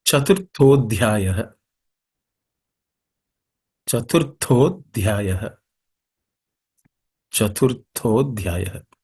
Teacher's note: the Tha is also an aspirated consonant. So it has to be stated with a bit of an exertion and extra air.